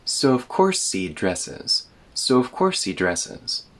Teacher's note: when we speak quickly, he turns into just e.